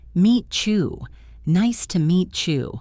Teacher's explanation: We often blend the t in meet and the y in u to make a chi sound. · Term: assimilation